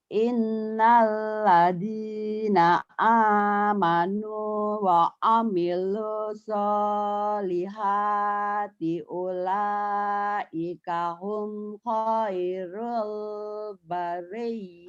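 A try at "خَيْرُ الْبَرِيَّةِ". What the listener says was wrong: Khairulnya jangan ditahan. Khairul bariyah.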